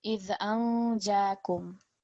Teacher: Jeem is in our second table, which means that we produce a light nasal sound on the noon sakin.